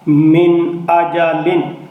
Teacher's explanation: اب اس نون کے اوپر اظہار ہے کیونکہ نون ساکن کے بعد حمزہ ہے، تو یہاں نون پہ غنہ نہیں ہوگا بلکہ اظہار ہوگا۔ میم زیر نون من، ہا زبر الف ہا، من ہا، دال دو زیر دن، من ہا دن۔